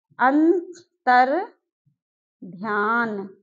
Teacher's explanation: हमारा विसर्ग का र में परिवर्तन हो जाएगा